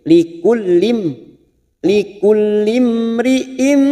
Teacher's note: Likullim masuk ke huruf lam yang bertasdid, likullim langsung masuk ke huruf mim sukun lim, likullim, likullim ri'im, mim sukun bertemu ro idhar safawi, kita baca jelas